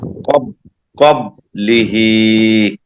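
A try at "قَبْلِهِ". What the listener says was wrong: হ্যাঁ হ্যাঁ, উচ্চারণ ঠিক আছে, তবে এই যে কলকলাটা হচ্ছে না। কফ তো বা জিম দাল একটু আগে বলছিলেন না, বা কলকলার হরফ। এই যে বায়ের উপরে জজম আছে, এই পাঁচ হরফে জজম হলে কলকলা করে দিয়া পড়িতে হয়। একটু কলকলা করেন, কব।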